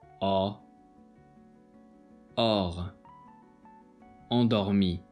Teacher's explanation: This sound is just like a regular O sound, but you have to open your mouth a little bit more. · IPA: /ɔ/